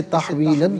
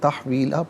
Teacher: اسے تحویلاً پڑھیں گے، وقف کی صورت میں تحویلہ پڑھا جائے گا